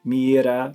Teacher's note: That flick of the tongue there that you're doing when you say coulda, woulda, shoulda, that's the sound that the R makes, a single R in Spanish.